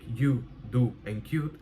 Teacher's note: have the U vowel pronounced more towards the front of the mouth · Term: U fronting